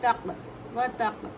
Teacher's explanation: واو پر حرکات ہے جلدی پڑھیں گے وا. قاف قلقلہ ہے تا کو ملا کر پڑھیں گے